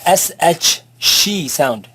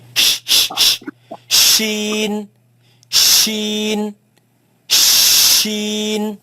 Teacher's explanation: It comes from the middle, you feel in the middle of the tongue.